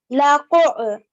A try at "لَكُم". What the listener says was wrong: This here is a meme. It looks like an ayn, and you pronounce the ayn very well, but this is a meme.